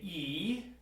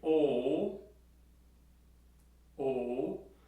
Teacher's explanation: So if we say E, go ahead and do that, E, and then we say O, O, you'll notice that the tongue moves from an upper position in E, to a lower position when you say O, O, E, O. And I'm going to demonstrate that now on a note, and you're going to hear the difference in the pitch and timbre as I say E, O while I'm playing.